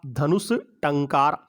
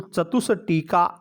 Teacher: विसर्ग के आगे ट वर्ण है तो विसर्ग का मूर्धन्य से होकर के धनुष टंकार रूप बना